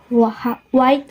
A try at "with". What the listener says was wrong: The learner mispronounced with as white and high as height.